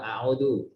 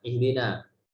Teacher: contoh-contoh huruf hamzah yang harus dibaca tipis